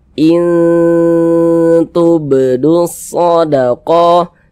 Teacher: Nah, maka nun sukun bertemu dengan huruf ta, hukumnya adalah ikhfa hakiki akrob. Maka cara membacanya dibaca samar kemudian berdengung. · in sempurna jangan tapi dia disamarkan in samar kan bunyinya kemudian didengungkan jadi suaranya itu kita tahan kita panjangkan sejenak